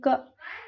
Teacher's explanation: इसको ही हम कंठस्थ कहेंगे, क्योंकि इसको कंठ के आधार पर बोला जाता है। जब बोलें क, तो कंठ पे आता है, कंठस्थ।